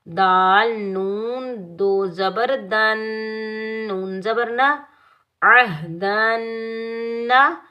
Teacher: دال کے اوپر 2 زبر کی تنوین ہے، دال کو ہم نون مشدد کے ساتھ ملائیں گے۔ نون مشدد حروف یرملون کے مجموعے میں سے آ رہا ہے تو نون مشدد پر ہم غنہ کریں گے، ناک میں آواز پیدا کریں گے جب ہم غنہ کریں گے، بغیر کھینچے پڑھیں گے۔